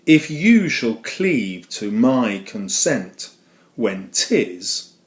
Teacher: it has a pattern of unstressed, stressed, unstressed, stressed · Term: iambic pentameter